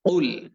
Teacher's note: শব্দটি হচ্ছে উল, এবং কফ অক্ষর উচ্চারণ করার সময় আমাদেরকে আমাদের জিহ্বার গোড়া একটুখানি উপরের দিকে উঠিয়ে দিয়ে আওয়াজ এবং কণ্ঠস্বরকে ভারী করে দিয়ে, মোটা করে দিয়ে